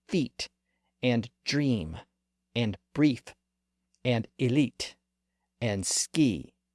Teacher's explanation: The highest vowel sound in the front part of the mouth is the E sound. Again, I'm not talking about the letter E.